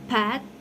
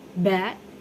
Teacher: Both are produced by bringing both lips together and releasing a burst of air. But P does not use the vocal cords while B does.